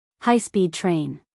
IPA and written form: ˌhaɪ spiːd treɪn (high-speed train)